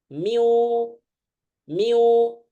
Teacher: mulut dengan hidung dua-duanya ngalir suaranya · usahakan hidungnya juga terasa sengau di mulut didorong di hidung didorong jadi dua-duanya